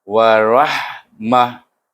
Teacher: Bila wakaf kita matikan huruf ta marbutah ini iaitu bunyinya ha. Baca dengan ha. · Kemudian mah bunyinya di pangkal halkum. Ha tu mah bunyinya.